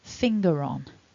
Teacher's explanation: the word finger they'll be one of those tiny r's and the function of that r is to link if we've got a word that follows that begins with a vowel like the word on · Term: the linking r